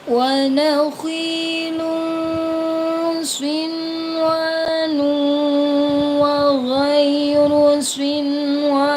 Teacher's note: Ada nun sukun bertemu dengan wawu dalam satu kalimat dibaca jelas ya, dibaca jelas. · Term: idhar wajib